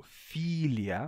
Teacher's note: esse i como é longo ele se Manteve fechadinho e a palavra continuou com i em português a gente tem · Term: I longo